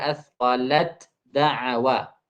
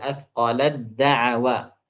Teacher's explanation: Hilangkan hamasnya. Diganti taknya menjadi dal. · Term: ta diidghamkan pada dal